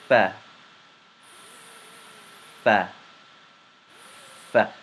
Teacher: Characterized by the edge of the front teeth meeting the lower lip